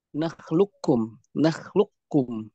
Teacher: idgham kamil ketika qafnya masuk seluruhnya ke dalam kaf